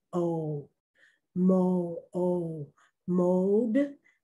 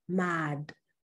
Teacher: the o is saying its name in the first word o mo o mode but in the second word it is short